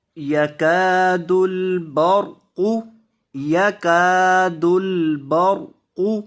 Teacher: را کو اور قاف دونوں کو موٹا کریں گے، با کو را کے ساتھ ملائیں گے، با زبر را، بر قاف پیش قو، برق.